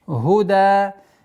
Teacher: Долгота в размере 4 огласовок аннулируется, остается в размере 2 огласовок.